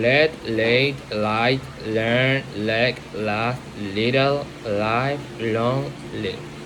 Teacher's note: Tongue tip pressed against the gum ridge directly behind the upper front teeth.